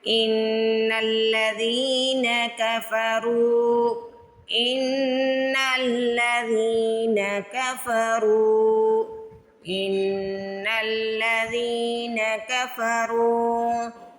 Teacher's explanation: پیش کے بعد واو ساکن آئے تو اس ورڈ کو کھینچ کے ادا کرنا ہے